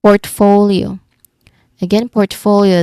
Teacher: The second syllable is the stressed part.